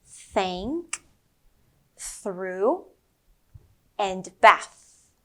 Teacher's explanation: think about a gentle breeze that's passing between your upper teeth and your tongue. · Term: quiet TH sound